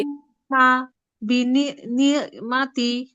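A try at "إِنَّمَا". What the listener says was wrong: আম্মা একটু টান হবে আম্মা বিনিআমাতি হামজা নুন জের নুন জবর না ইন্না রাবা জবর রব্বা জবর বা কাফ জবর কা ইন্না রব্বাকা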